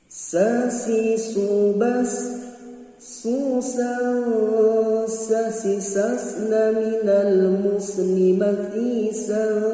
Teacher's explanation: sin biasa, yaitu min baini tarfil lisan wa fawqa thanaya al-ulya was-sufla. Ini disebutnya sofir. Sofir itu salah satu sifatul huruf yang tidak ada lawan jenisnya.